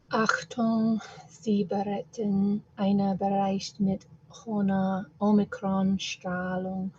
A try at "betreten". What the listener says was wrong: Yeah, be careful with the missing T here. Betreten.